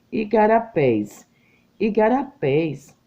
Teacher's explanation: igarapés é oxítona a sílaba forte pés é oxítona